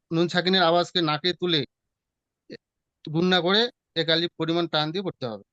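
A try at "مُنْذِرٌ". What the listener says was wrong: গুণনা আবার টান হয়ে যাচ্ছে, বুঝতে পেরেছেন? একালি পরিমাণ গুণনা করে পড়তে হবে, টানটা হবে না।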